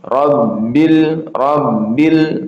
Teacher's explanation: Maka ini dibaca ee satu harakat masuk lepas. Masuknya satu harakat lepasnya satu harakat ya.